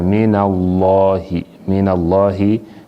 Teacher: When Fatha come before لفظ الجلالة, the لفظ الجلالة is heavy.